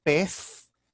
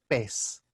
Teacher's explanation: Esse C era uma pronúncia mais forte, como o TS, petse, que depois evolui a pez, ou pez. No espanhol peninsular mantém-se uma interdental, pez, mas no espanhol americano é uma sibilante